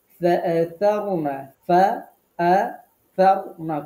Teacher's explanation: ফাআতারনা ফাআতারনা খুব খেয়াল করে উচ্চারণ করতে হবে। ফা নিচের ঠোঁটের পেটে উপরের দাঁতের আগার সাথে। আতারনা র ফোর হবে।